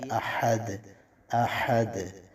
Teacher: ہا اس کو آپ نے وسط حلق سے نکالنا ہے اور آواز اس میں ظاہر ہونی چاہیے۔